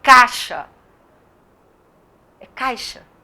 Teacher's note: vezes fala com i tão fraquinho que sai caixa é caixa o i é bem fraquinho é a semivogal